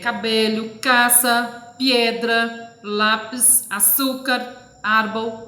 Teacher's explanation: O acento recai na penúltima sílaba. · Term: Lhanas